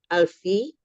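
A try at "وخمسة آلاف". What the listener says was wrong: kan wa khamsatul alfi sebenarnya bukan alfi wa khamsatul alafi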